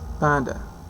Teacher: p, which is voiceless, bilabial, stop